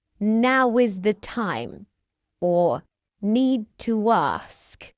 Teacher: We can add a soft w sound to join rounded vowel sounds like ow and oo to another vowel sound. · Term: linking sound, w